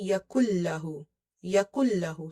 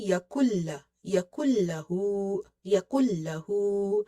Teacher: You will say yakullahu, yakullahu, simple, no stretching, no ghunna. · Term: merging without ghunna